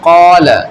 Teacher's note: مثال کے طور پر دیکھیں آپ، جیسے قالا، تو دیکھیں یہ الف ہے، الف سے پہلے کیا قاف ہے، اور قاف کس میں سے یہاں پر حروف میں سے ہے قاف۔ تو الف کو ہم یہاں کیا پڑھیں گے، پر پڑھیں گے یعنی موٹا کر کے پڑھیں گے